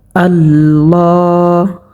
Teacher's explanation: এখানে লামের উপরে খারাজ জবর হওয়ার কারণে এখানে এক আলিফ পরিমাণ টানিয়া পড়তে হবে।